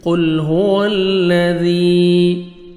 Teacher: ذال کو نرمی سے ادا کرنا ہے اور یا مد ہے 1 سیکنڈ آپ نے ذال کو کھینچنا بھی ہے